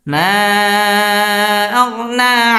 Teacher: মা মধ্যে মুনফাসিল 3 আলিফ টেনে পড়তে হবে।